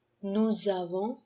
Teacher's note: a liaison between nous and avons, which makes the z sound